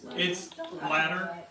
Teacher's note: there's also something called a tapped R which Americans do use I mean words like ladder and butter it's latter it's like you tap your tongue on the top